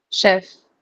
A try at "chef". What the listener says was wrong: It's chef. Okay, it's not chef. The ch pronunciation है, ch का जो pronunciation है यहाँ पर वो sh का है, ch का नहीं है. Remember that.